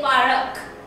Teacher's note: When I say this park, okay, students often use this insertion of vowel and they say parak